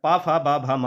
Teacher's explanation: पा, यानी आप देख सकते हैं दोनों हमारे होंठ जो है वो मिल रहे हैं, यानी कि होंठों की सहायता से बोले जा रहे हैं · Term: ओष्ठ व्यंजन